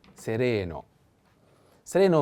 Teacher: i have to put the accent on the second e sereno sereno means